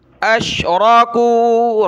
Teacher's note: را کو موٹا کیا، کاف واو پیش کو، کاف باریک ہے